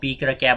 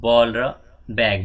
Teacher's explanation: To produce प एन्ड ब there is completely closure, पुरै बन्द हुन्छ oral passage, and there is sudden release, फेरि एकैछिनपछि झ्याप्प बन्द भएर एकैछिनपछि खुल्ने भयो। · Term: बाइलेबल साउन्ड्स